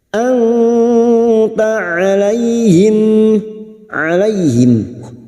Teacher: Kita samarkan bunyi nun sukun dan mendengung selama 3 harokat. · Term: ikfa hakiki